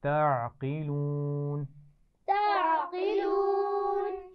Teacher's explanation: عین باریک ہے اور قاف موٹا ہے، اس کا خیال رکھنا ہے